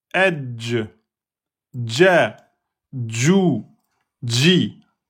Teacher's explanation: Donc la lettre Jim, c'est le milieu de la langue en contact avec le milieu du palais.